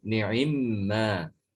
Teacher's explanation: Ada idgham dari mim. Mim diidghamkan ke mim sehingga menjadi ni'imma.